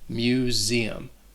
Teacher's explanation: That S is also going to sound like a Z.